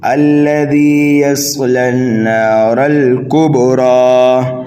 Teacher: کبرا کے را کو ہم ایک الف کے برابر ہی کھینچ کر کے پڑھیں گے, موٹا کر کے پڑھیں گے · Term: کھڑا زبر